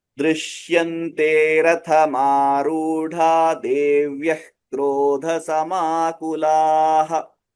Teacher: This time, because the letters are very close to each other, the dha and after dha there is one visarga and the da, they are very close to each other. So this sandhi work is happening and the visarga, the dots are getting eliminated.